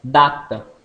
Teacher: oral, oclusiva, linguadental, sonora